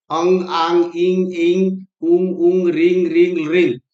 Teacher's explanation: अर्थात मुखेन सह नासिकया अपि उच्चारिता स्वरा अनुनासिक स्वरा संति, अर्थात मुंह के साथ जब नाक से भी हवा निकलता है तब उसे हम क्या बोलते हैं, अनुनासिक स्वर